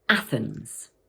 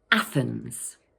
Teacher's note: This word has two syllables, Athens, and the first one is stressed. Watch out for that tricky th sound.